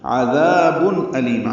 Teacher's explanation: عین وسط حلق سے ادا کریں گے، ذا الف مدہ ہے، دو حرکات لمبا ہے، تنوین کے بعد حمزہ آنے کی وجہ سے اظہار ہوگا، عذاب علیم۔